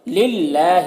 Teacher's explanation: للہ، یہاں پر اللہ کے لام سے پہلے لام کے نیچے زیر ہے، تو اللہ کے لام کو باریک پڑھیں گے، کھڑا زبر ہے، یہ الف مدہ کی طرح ہوتا ہے، تو اسے 1 الف کے برابر کھینچیں گے